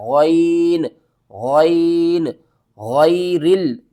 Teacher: غین کو آپ نے حلق کے اوپر والے حصے سے ادا کرنا ہے